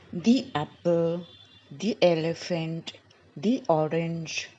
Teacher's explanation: So the word or the little sound is added is y. Little bit sound of y comes in between. The apple, the elephant, the orange, the R's.